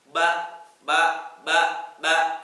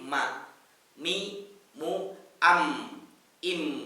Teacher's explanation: Ini hati-hati mengucapkan huruf mim. Kalau tidak melibatkan rongga hidung, maka dia bunyinya jadi ba, persis seperti ba. Tidak tutup hidungnya sempurna, ba, ba, tidak bisa ya.